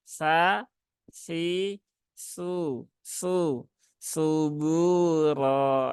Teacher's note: Ya ujung lidah di gigi seri di atas · Jangan sampai tertukar menjadi su. Dia sa ya ujung lidah di gigi seri atas